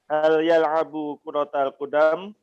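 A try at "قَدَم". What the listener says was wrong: Qadam, enggak panjang Pak dalnya.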